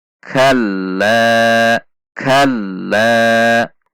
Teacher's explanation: ayat yang ke-4 Kaf fathah masuk ke lantai sedikit ada tekanan perhatikan sifat dan makhroj huruf Kaf ada dorongan udara saat mengucapkannya